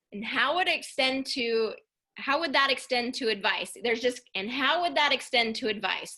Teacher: I love the intonation, the way that you kind of ramped up into the sentence. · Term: ramping up